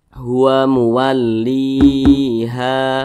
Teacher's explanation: Posisinya itu tepat berada di belakang huruf Ya Sukun Mad thi'i panjangnya itu dua harakat atau kira-kira dua ketukan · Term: dibaca panjang